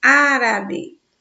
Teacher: No caso de árabe, olha só, se nós separarmos a palavra árabe, ficamos árabe. Contando do finalzinho para frente da palavra, a gente tem 3 sílabas, sendo que a terceira, né, contando do finalzinho para frente, é a mais forte. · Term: proparoxítonos